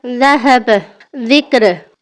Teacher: जुबान को ऊपर वाले दांतों के किनारे से हल्का सा बाहर निकालेंगे। लेकिन आवाज के साथ लेकिन इस बार आवाज में नरमी और कैंपरन होगा।